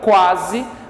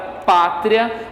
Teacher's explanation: o encontro vocálico começa de maneira fraca, por isso uma semivogal vem primeiro, e ele cresce, ele evolui para uma vogal, por isso que é um ditongo crescente.